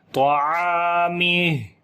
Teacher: ہا کے اوپر پھر صفت ہمس کریں گے یعنی کہ سانس جاری کریں گے اور آواز میں پستی آئے گی، کمزوری ہو جائے گی، طعامہ۔ اور یہاں پر یہ چھوٹی مد بھی ہے تو اگر تو یہاں پر آپ ملا کر پڑھیں گے تو تب یہ مد جو ہے وہ اپلائی کی جائے گی، ادروائز یہاں پر جب رکیں گے تو پھر یہ مد جو ہے وہ نہیں پڑی جائے گی، ٹھیک ہے۔